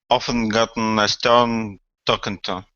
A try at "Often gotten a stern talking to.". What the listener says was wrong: Okay, very good.